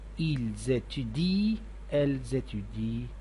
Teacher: Notice that we never pronounce the nt at the end of ent verbs.